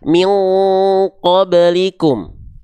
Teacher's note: Kalau ketemu dengan huruf qaf, engnya tebal.